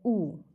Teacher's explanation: उ बोलने से वृत्तमुखी ओष्ठगोल स्वर। उ का उच्चारण करते समय ओंठ कैसे हो जाता है? गोल हो जाता है, उ, इसलिए यह वृत्तमुखी स्वर है।